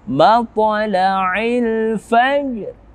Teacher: Hukumnya adalah sama seperti sebelumnya, qalqalah sughra. Matla'il fajr, jimnya dibaca ringan pantulannya